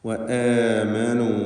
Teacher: ആമനൂയിലെ ഹംസയുടെ ദീർഘം മദ്ദുൽ ബദലാണ്. അവിടെ 2 ഹറക്കത്തിൻ്റെ അളവിൽ മാത്രമുള്ള ദീർഘമാണുള്ളത്. എല്ലാം തർക്കീഖ് ചെയ്ത് ഇസ്തിഫാലിൻ്റെ ഹർഫുകളായതുകൊണ്ട് തർക്കീഖ് ചെയ്തുകൊണ്ട് ഉച്ചരിക്കേണ്ടവയാണ്.